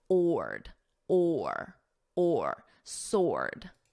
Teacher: Now, sword, notice the W is totally silent.